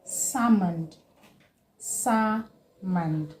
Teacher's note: the L in this word is not pronounced. It is a silent letter.